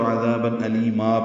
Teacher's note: ہم نے وقف کیا تو عذابا علیما پڑھا، 2 حرکات لمبا کی